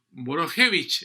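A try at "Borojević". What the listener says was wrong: Boroevic. Es que esa J está de más, yo creo que vino de colada. No tiene J.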